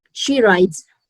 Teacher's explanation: Di sini bunyinya Z ya. S-nya bunyi Z